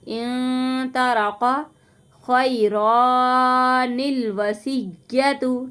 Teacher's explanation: نون کو لام کے ساتھ ملا کے پڑھیں گے